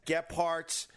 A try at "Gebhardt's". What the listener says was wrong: So there's no P and there's no T in Gebhardt's. Listen to how he pronounces this. Gephardt's. It's Gebhardt's.